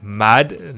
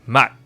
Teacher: So like here, because it's a 받침 down here, it turns into a T. So instead of saying mad, like a D sound, it turns into mat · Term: a T kind of sound